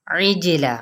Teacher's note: کو ہلانا نہیں اور ادھر سے لام کو نہیں ہلانا، عجلہ عین کے مخرج کو واضح کرتے ہوئے جیم پہ قلقلہ کریں